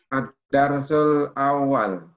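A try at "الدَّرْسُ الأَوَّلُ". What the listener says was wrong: Nah, hidupkan harokat terakhirnya. Ad-darsul awwalu.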